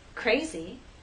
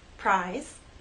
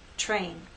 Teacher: want you to understand this R is a voice sound but after these three consonant sounds it begins voiceless and then becomes voiced as we go into the next vowel sound so we don't have our voice